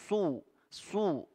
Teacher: Su, ya, dia juga ada sofirnya, huruf shad, ya, berdesis. Jadi adanya penyempitan di mulut sehingga suara menajam, ya, ada desisan. Su, jadi tebal karena dia huruf isti'la.